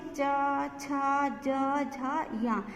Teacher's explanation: जो ये चा वर्ग है वो कंठ से ऊपर जो तालु होता है वहाँ जाकर हमारी जो वायु प्राण है वो रुकती है। तो जो वायु जहाँ रुकती है और फिर जो वर्णों का क्रिएशन होता है वो उसको तालव्य बोला जाता है।